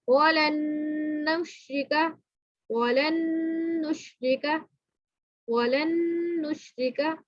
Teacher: اچھا جی، یہاں پہ آپ نے دیکھا کہ یہ والا جو ساکن والا نون ہے یہ ہم تھوڑا سا سائلنٹ کر رہے ہیں، آواز آ رہی ہے مگر بالکل چھپ رہی ہے اس کے اندر آواز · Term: غنہ